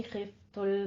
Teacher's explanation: खिफ में खौ को पुर पढ़ना है